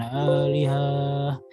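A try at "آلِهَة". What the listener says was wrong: Jangan dipanjangkan, haknya tidak perlu dipanjangkan. Alihah. Alihah. Alihah.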